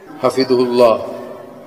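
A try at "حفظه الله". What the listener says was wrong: Hafidhah fi'il madi itu. Hafidhah, hafidhah, bukan hafidhu, bro.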